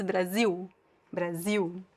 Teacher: Don't pronounce the L at the end of Brazil.